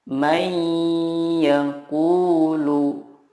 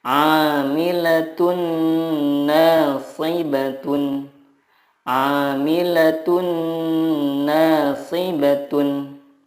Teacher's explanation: meleburkan nun sukun ke huruf berikutnya dan disertai gunnah yang dipanjangkan 2-3 harokat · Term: idgham bila gunnah